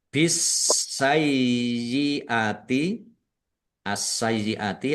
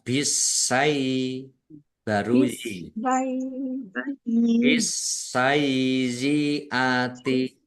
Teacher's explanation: sin-nya dibaca dobel ditekan dan ditahan biar tampak dobel